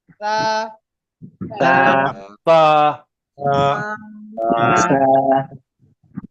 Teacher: জিহ্বার আগা সামনের দাঁতের আগার সঙ্গে হালকা ভাবে লাগান